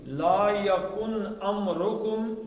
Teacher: نون کا اظہار کرنا ہے، آگے حمزہ آ گیا